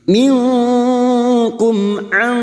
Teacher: Minkum an, mim sukun bertemu ain idhar safawi. Mim sukun dibaca jelas tanpa mendengung